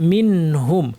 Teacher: এর নাম হচ্ছে ইজহার। নুন সাকিনকে স্পষ্ট করে, অর্থাৎ গুন্না না বাড়িয়ে পড়তে হবে